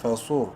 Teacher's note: منہ بھر کے پڑھیں گے، بولڈ لیٹرز میں سے ہے، اور را ساکن سے پہلے چونکہ صاد کے اوپر پیش ہے اس لیے را کو بھی منہ بھر کے پڑھیں گے